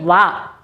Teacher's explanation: దంత నుంచి పెదవుల ద్వారా పలుకబడుతుంది దంతం నుంచి పెదవుల ద్వారా పలుకబడే అక్షరం వ ఒకటే అక్షరం అండి వ · దంత్యోష్ట్యం అని చెప్తాం. అంటే దంతము నుంచి పెదవుల ద్వారా పలుకుబడే అక్షరం ఒకటే వస్తుందండి, అది వా. ఏంటన్నమాట?